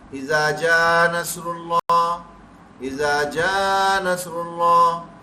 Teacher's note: یہ ہمارے حمزہ زبر آ یہ اڑ گیا، ہمارے پڑھتے پڑھتے غائب ہو گیا